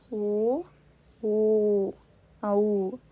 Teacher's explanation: ಕಂಠೌಷ್ಟ ಕಂಠ ಪ್ಲಸ್ ಓಷ್ಠ್ಯ